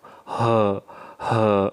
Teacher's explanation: H besar itu keluar dari aqsal halqi tenggorokan paling bawah